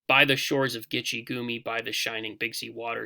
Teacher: So the emphasis is always at the beginning of the foot, which is why it's trochaic, and because there are only 4 feet in each line here, that's why it's tetrameter, meaning 4, rather than pentameter or 5. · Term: trochaic tetrameter